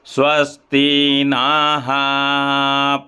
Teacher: नाहा के बाद जो विसर्ग है दीर्घाकार विसर्ग है, यानी ये देर तक बोला जाएगा।